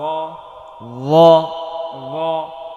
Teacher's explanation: ল জবর ল, ল জবর জ, ল, ল, জিব্বার আগা সামনের উপরের দুই দাঁতের আগায় লাগিয়ে ল